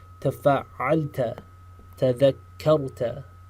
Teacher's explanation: Again, pay attention to the ta, the sound of the ta in the very front, and the sound of the shadda, right? That small delay in the pronunciation of the word. That tells you there's a shadda.